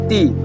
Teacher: When you say t the tip of the tongue it will touch the area just behind the upper teeth. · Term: alvolar